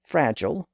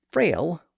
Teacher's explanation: English ended up with Fragile with its Latin G sound in the middle and the French form frail without that g sound